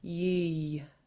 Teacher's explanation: make sure you pronounce that y that rounding at the end